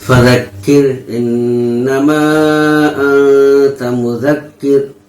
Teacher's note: اور کاف کر، کاف را زیر کر، را پر جزم ہے، جزم والے حرف کو پیچھے حرکت والے حرف سے ملا کر پڑھیں گے اور یہ را باریک پڑھی جائے گی